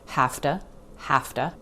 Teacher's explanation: The word to reduces to ta